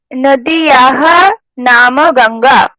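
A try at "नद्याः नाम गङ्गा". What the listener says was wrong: नदीयाः ना, नद्याः उच्चारणটা।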